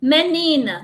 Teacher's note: depois do ni que é a sílaba tônica ainda tem uma sílaba átona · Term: paroxítona